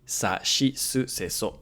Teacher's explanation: ‘Si’ doesn't exist in Japanese It's always going to be [shi]